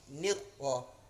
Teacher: Takrir ini bergetar, tapi satu kali saja getarannya